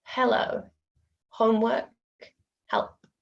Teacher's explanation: the tongue isn't touching anywhere it's just a breath